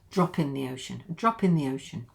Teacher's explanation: So this is a p linking to the vowel sound.